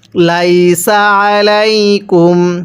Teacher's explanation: এই আইনটা পড়ার সময় আমরা গলার মধ্যে একটু চাপ দিয়ে পড়ব। যদি চাপ দিয়ে পড়ি তাহলে আইনটা সহি শুদ্ধ উচ্চারণ হবে।